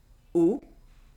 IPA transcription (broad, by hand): o